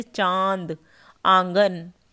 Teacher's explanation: अनुनासिक जिनका उच्चारण नाक और गले दोनों से होता है